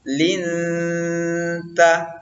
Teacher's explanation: Selanjutnya pada kata linta, ya, itu terdapat hukum tajwid ikhfa namanya. Jadi bunyi nun mati itu disamarkan, dimasukkan ke dalam ta sambil berdengung